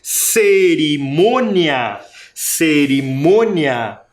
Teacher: sílaba tônica esse som é diferente desse som devido ao acento um acento É nasal parece que sai pelo nariz o som Mia o outro é agudo ele sai pela boca